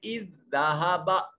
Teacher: 2 حروف ہم نام اور ہم شکل اکٹھے ہوئے، ان میں سے پہلا ساکن اور دوسرا متحرک تھا تو پہلے کو دوسرے میں ملا دیا، پھر 2 حروف کو ملانے والی اس علامت جو ڈبلیو کی طرح علامت ہے، اس علامت کو شد کی علامت کہا جاتا ہے، اذ ذہب۔ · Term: ادغام مثلین